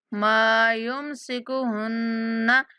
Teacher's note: نون مشدد پر غنہ کریں گے۔